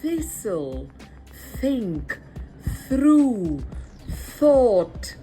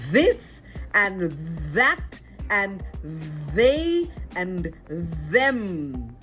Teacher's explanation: one has breath, the other has vibration.